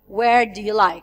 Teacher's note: it's rising and then falling intonation in a question like, where do you like? I mean, WH word form question.